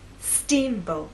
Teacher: Now, when you say the word, I want you to think about making the first part at a higher pitch. So our voice will be higher at the beginning and lower in the second part.